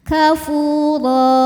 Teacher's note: Huruf ro dibunyikan secara tafkhim karena harokatnya tanwin fathah, maka dibacanya tebal. Kafura. Apabila berhenti di ro, maka ini hukumnya adalah mad iwad, sebab ada harokat tanwin fathah yang diberhentikan.